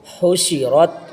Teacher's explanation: حو، شین زیر شی، حوشی، را تا زبر رت، حوشی رت، را یہاں پر پر ہوگا، تا بریک ہوگا